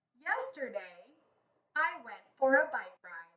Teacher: did you hear my voice get lower and stop at the end?